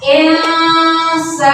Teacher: Maka dibaca samar-samar. Insana disertai dengan dengung ya.